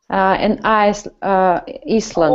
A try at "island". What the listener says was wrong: Oh, be careful. No. Island. Yes, we don't pronounce S. Island.